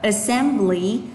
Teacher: từ này là assembly vì trọng âm của nó thứ hai